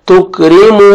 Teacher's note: वाव मद्दा है, मीम को आपने 1 अलिफ के बराबर खींचना है